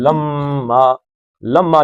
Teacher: اور لما میم پہ شد ہے تو اس کو کھینچ دینا ہے